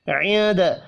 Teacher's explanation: نون ساکن کے بعد دال ہے، اخفاء حقیقی ہوگا